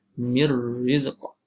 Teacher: Mir terus masuk pada ra tanpa dipanjangkan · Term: Idgham bila gunnah